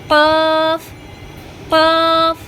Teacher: 4 নম্বর মাখরাজ জিহ্বার গোড়া তার বরাবর উপরে তালুর সঙ্গে লাগিয়ে